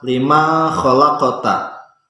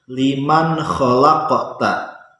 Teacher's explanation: Contoh bacaan yang salah misal lima khalaqta, tapi harus liman khalaqta. Membaca nun matinya harus jelas karena nun mati ini bertemu dengan huruf izhar yaitu kha.